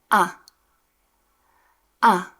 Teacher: In Afrikaans, A is a clear, open sound, not E. A. Say it after me. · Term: Afrikaans sound A